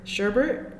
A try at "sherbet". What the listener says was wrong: It's just sherbet. Well, I mean, if you look at the word S-H-E-R-B-E-T, there is no extra R, so it's not sherbet.